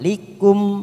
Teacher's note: mim idhar safawi, kita baca jelas tanpa mendengung